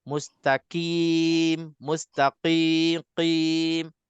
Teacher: Kena jelaskan qaf ini sifatnya lebih tebal, lebih beza dengan huruf kaf. Kalau kita tak tebalkan, dia akan jadi huruf kaf.